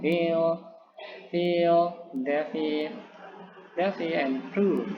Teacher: Ya, jadi konsonan itu terhalangi oleh labiodental, yakni gigi dan bawah bibir. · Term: labiodental fricative